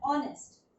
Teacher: Again the word starts with H. But we are getting a sound of O. Phonic sound O.